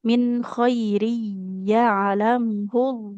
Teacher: tapi min bunyi nunnya jelas · kalau nun sukun bertemu kho itu dibaca nunnya jelas ya, tidak ikhfa.